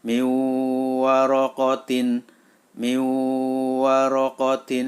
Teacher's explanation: maka suara Nun masuk ke dalam huruf wawu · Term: Idgham Bighunnah